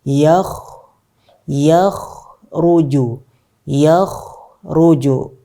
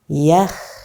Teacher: Rokhawah berarti kita rokhawahkan, kemudian kita tebalkan karena kha dia huruf tebal. Yakh kita panjangkan alirannya dan kita tebalkan. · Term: kha yang tebal